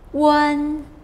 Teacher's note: The first tone, the high tone